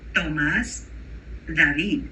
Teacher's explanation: But in Spanish, the T and the D are made on the teeth, almost interdental.